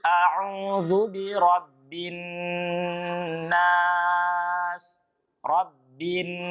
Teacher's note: huruf nun di situ disebut dengan guna dalam ilmu tajwid maka harus ditahan